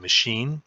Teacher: it's a high vowel and you can see the tongue is hunched up high in the mouth here and it's obstructing the front part of the mouth too